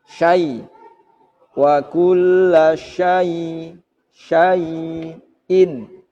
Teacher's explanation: Kaidahnya atau pengertiannya ketika ada wawu sukun atau ya sukun seperti kalimat ini syai, syai'in diawali fathah maka dibaca mat lain atau mat len. Nah, suaranya i dan u, tidak boleh bersuara e atau o